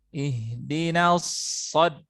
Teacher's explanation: Ketika masuk shad baru tebal.